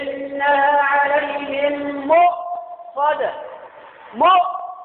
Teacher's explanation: يجي عند الهمزة يشدد فيها قوي حتى كأنه يتهوع